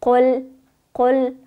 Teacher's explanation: قاف لام پیش قل، حروف پر و باریک پشت هم آمده، درست است که شاید کمه سخت احساس شوه، اما ای برتان عادی میشه بفهمین که قاف پر شد لام باید باریک شد، قل نشه باریک، قل قل. اول قاف پر ادا کنین و لام باریک تر ادایش کنین